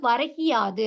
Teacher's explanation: இதுல வந்து என்ன ஆகுது அப்படின்னா, முதல் சொல்லோட இறுதியில இருக்கிற அந்த கு என்னும் எழுத்து கி என ஒலிக்கிறது. அதுவும் முழுமையாக ஒரு மாத்திரை அளவில் ஒலிக்காமல், அரை மாத்திரை அளவாக குறைந்து ஒலிக்கிறது. இவ்வாறு தன்னோட மாத்திரை அளவிலிருந்து குறைந்து ஒலிக்கிற இகரம் தான் குற்றியல் இகரம் அப்படின்னு சொல்றோம்.